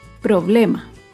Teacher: Problema se acentúa en la penúltima sílaba, pero no lleva tilde porque termina en vocal. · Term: palabra grave